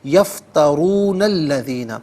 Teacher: یفترون میں جو نون پر زبر ہے اسے الذین کے لام کے ساتھ ملائیں گے، درمیان میں سے الف نی حمزہ کو حذف کیا جائے گا، اسے ہم پڑھیں گے یفترون الذین، لیکن یہاں پر وقف کیا جائے گا اور الذین سے پھر ہم شروع کریں گے۔